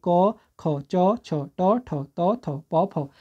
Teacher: अघोष का मतलब क्या है कि जिस समय इनका उच्चारण कर रहे हैं कंपन उत्पन्न नहीं होता है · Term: अघोष व्यंजन